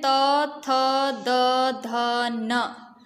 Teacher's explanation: स्पर्श व्यंजन में त, थ, द, ध, न। आप जब इसका उच्चारण कर रहे हैं तो आपकी जो जीभ है वो आपके दांतों से स्पर्श हो रही है। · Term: दंत्य उच्चारण